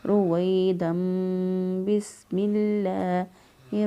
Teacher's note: تو اس لیے یہاں پر میم لگایا کہ اگلی صورت کے ساتھ ملانے کے لیے، بسم اللہ کے ساتھ ملانے کے لیے با ہے شروع میں، تو اس لیے تنوین جو ہے اس کے بعد نون ساکن یا نون تنوین کے بعد جب با آ جائے تو وہاں پر انقلاب ہوتا ہے، نون ساکن یا نون تنوین کی آواز جو ہے وہ میم سے بدل جاتی ہے